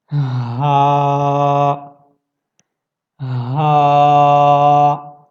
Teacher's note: آپ کے گلے کے بالکل جو نیچے کا حصہ ہے وہاں سے آپ اس کو ادا کرتے ہیں